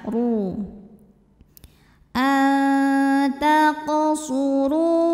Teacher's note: huruf ro dibunyikan secara tafkhim karena ro berbaris damah maka cara bacanya adalah tebal ya pangkal lidah angkat